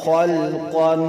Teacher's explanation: قاف دو زبر قان، قاف موٹا کریں گے اور وہاں اوپر تنوین ہے گنہ بھی کریں گے